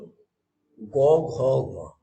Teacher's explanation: এখানে ভোকাল কর্ডে বেশ ঘর্ষণ খায়, চাপ পড়ে, সেই জন্য এগুলো হলো ঘোষ